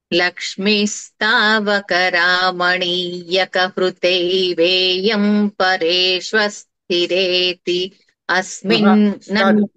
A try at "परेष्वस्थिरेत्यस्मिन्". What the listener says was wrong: పరేష్వస్థిరేతి అని ఆపితే పర్వాలేదు, కానీ కలిపి చెప్పేయండి ముందర, తర్వాత ఎలాగైనా ఆపుకోవచ్చు. అక్కడే పరేష్వస్థిరేత్యస్మిన్. పరేష్వస్థిరేత్యస్మిన్.